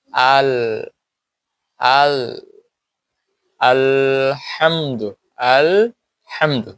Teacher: জিহ্বার আগের অংশ গিয়ে লাগে তালুর সাথে, আগের অংশ গিয়ে লাগে দাঁতের মাড়ির সাথেও লাগে, তালুর সাথেও লাগে। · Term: লাম